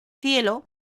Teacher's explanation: Lo que se invierte es el orden, pues la primera sílaba de la palabra cielo tiene igualmente 2 vocales, I y E, una cerrada y luego una abierta, por lo que forman también un diptongo